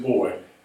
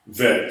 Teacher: Beit, which hardens the sound, so it's a B sound, B as in boy, instead of a V as in vet sound. So you have a B, you have a seri up under there.